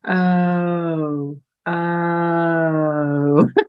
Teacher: have those two sounds if you make your uh really slow you can feel the lip rounding towards the end of it and you can feel that it's a bit more open at the beginning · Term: diphthongs